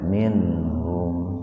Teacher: Ini nun mati dan ketemu ha-nya dalam satu kata. Jadi dibaca idhar tapi sepintas saja.